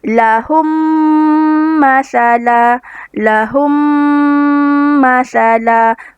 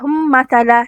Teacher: idgham mislain syafawi dibaca dengan merapatkan kedua bibir serta dengung